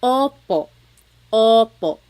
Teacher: Sometimes I think of it like having a ball in your mouth. Your tongue gets kind of pushed back and down a little bit and the inside of your mouth is open and wide. So O like OPO. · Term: letter O